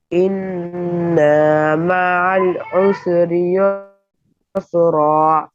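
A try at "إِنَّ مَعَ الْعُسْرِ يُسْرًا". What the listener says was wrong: انا کو کچنا نہیں, انا میں بس گننا کرنا, کچنا نہیں.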